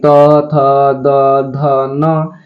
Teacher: तो दंत से त वर्ग का, यानी त, थ, द, ध, न।